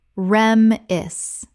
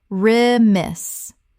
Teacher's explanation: Two syllables with the stress on the second. The first syllable is reduced.